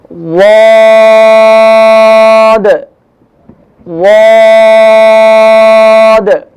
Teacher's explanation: واد کا جو مخرج ہے زبان کا کنارہ دونوں طرف کا کنارہ اور اوپر کے دانوں مسوڑوں سے ٹکرائے گا اور ایک دم سے نکلے گا.